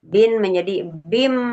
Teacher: Menukar suara suara tanwin n menjadi suara mim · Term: iqlab